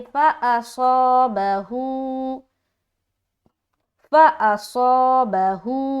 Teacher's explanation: अब ये जो हम मद्दा करेंगे तो सौ मोटा तरीके से हम खींचेंगे, मद्दा करेंगे, और हु को बारीक खींचेंगे। अब सौद क्यों मोटा, क्योंकि ये मोटा हर्फ है, ये हरूफ मुस्तालिया के अंदर आता है, इसके अंदर इस्तिअला की सिफत पाई जाती है, तो इसको हम मोटे तरीके से अदा करेंगे, है ना।